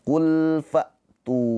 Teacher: tu panjang dua harakat dibaca panjang kenapa dibaca panjang alasannya kenapa karena ada pemanjangnya yaitu wau ini. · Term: Mad thobi'i